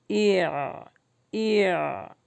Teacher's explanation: یاد رکھیے کہ اس کی سانس بند ہوگی لیکن آواز جاری رہے گی، ای ای۔ یہ جو آخر میں جو آواز جاری ہو رہی ہے اسی کو جہر کہتے ہیں۔